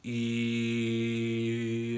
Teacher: And it is, first tone is even, remember that, okay? E, it's flat, it doesn't change. It can be higher E or lower E, but it needs to be even.